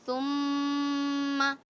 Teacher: ثم میں میم پہ تشدید ہے، پورا غنہ کیجئے پورے طور سے ، ثم تقریباً 2.5 سیکنڈ کا غنہ کرنا ہے، ثم ردد،